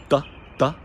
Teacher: The two words Doris and Doris are superficially quite similar. But in Gaelic we have a dental D, da, and much more weight at the beginning, much more oomph.